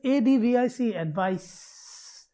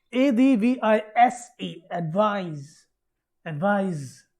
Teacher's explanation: Advise, advise, advise. You feel the vibration, advise, that is voiced.